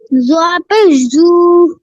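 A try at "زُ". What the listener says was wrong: টান হবে না, টান ছাড়া তাড়াতাড়ি পড়তে হবে, হরকতের উচ্চারণ তাড়াতাড়ি পড়তে হয়।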